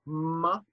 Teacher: a nasal that's produced with the lips